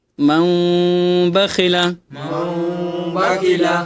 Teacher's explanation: নুন সাকিনকে মিম দ্বারা পরিবর্তন করে পড়তে হবে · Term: একলাবের গুণনা